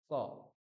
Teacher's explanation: দেখুন আপনার জীভের গোড়ার অংশটা কন্ঠের সঙ্গে মিলছে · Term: ককার